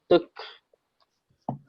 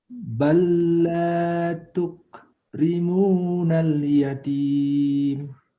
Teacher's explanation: Ya, kafnya ada kehnya itu. Tuk ada hamasnya deh keluar.